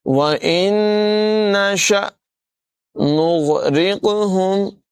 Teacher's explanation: غین کو جو ہے وہ حلق سے ادا کریں گے، گاف نہیں پڑھیں گے، نغرق نہیں پڑھیں گے، بلکہ نغرق را کی ادائیگی باریک ہوگی، قاف میں قلقلہ کریں گے اور قاف کو پر پڑھیں گے۔